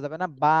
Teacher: যে সময় উচ্চারণ করতে হবে তখন এক আলিফ টান দিতে হবে বান আর বলা যাবে না বা এক আলিফ টান দিতে হবে